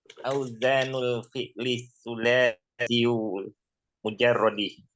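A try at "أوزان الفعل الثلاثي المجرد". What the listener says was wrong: Jangan sulasiyo. Naat ya, kasrahkan.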